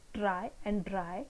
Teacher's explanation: So when you pronounce these two words, try and dry, when you pronounce R sound, at that time the tip of the tongue comes in contact with this portion, the area exactly behind the alveolar ridge, this portion, it touches this part, and then the sound is produced. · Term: post-alveolar sound